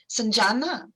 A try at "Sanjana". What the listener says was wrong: Sanjana. Very close, very close.